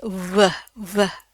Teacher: V tapi dari pita suara V. Jadi berasa tuh pita suaranya ngebunyi.